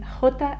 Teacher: trying to say h but putting a more rumbling sound into it kind of like from the back of your throat